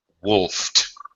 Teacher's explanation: Wolf, unvoiced past tense pronunciation is going to sound like a T.